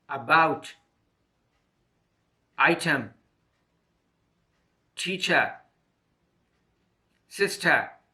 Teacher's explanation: er is a single and short vowel sound the mouth is mid open the tongue position is in the center of the mouth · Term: schwa sound